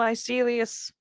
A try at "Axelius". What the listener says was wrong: Axe with an A. Well, Axelius.